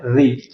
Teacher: मूर्धन्य ह्रस्व स्वर दोस्तों एक ही होता है केवल और वो होता है रे।